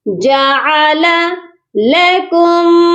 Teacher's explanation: دو لام ہے، دونوں کو الگ الگ پڑھنا ہے